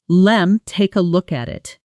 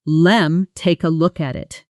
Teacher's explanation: with let me fusing into a single soft sound